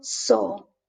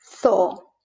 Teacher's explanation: in Latin America, they pronounce it like an S, zeta, but in Spain, we call it theta, and that's a TH in theater